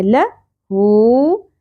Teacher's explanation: ہے، الذی لہو، لام کی زبر زیادہ نہیں کھینچی جائے گی، ہا کے اوپر الٹا پیش ہے، ایک الف کے برابر کھینچنا ہے